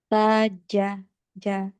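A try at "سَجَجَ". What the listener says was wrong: Nah, ini caca, masih caca. Jaja, sajaja.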